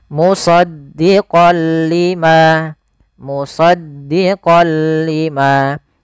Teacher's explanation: Suara nunnya kepada huruf lam. Tapi tidak boleh disertai dengan gunah. Maka dinamakan dengan idgham bila gunah. · Awalnya kalau kita baca musaddiqan karena bertemu dengan huruf lam, tanwinnya masuk ke huruf lam, suara n-nya dihilangkan menjadi, maaf diganti menjadi huruf lam. · Suara n-nya dihilangkan diganti menjadi huruf lam. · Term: idgham bila gunnah